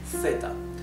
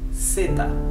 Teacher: it's never th, it's s, okay, in Latin America